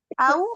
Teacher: Huruf wau. Masih ingat makhrajnya di mana? Bibir. Bibir ya. Kedua bibir ya. Asyafatan ya.